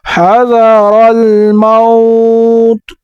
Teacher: را کو اوپر پڑھیں گے اور را کو لام کے ساتھ ملائیں گے ، تا کو وقف کی وجہ سے ساکن کر دیں گے،